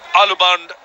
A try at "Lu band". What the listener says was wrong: Yeah, you got to be just a bit careful here. Alu means potato, so it's not Alu band, it's Lu band.